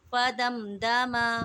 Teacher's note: میم ساکن کے بعد دال آ گیا ہے تو اظہار شفوی ہوگا اور یہاں پر غنہ ہم نہیں کریں گے